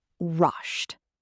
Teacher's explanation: If you said t, you're correct. In very rapid speech, you may not be able to tell the difference between the d and the t.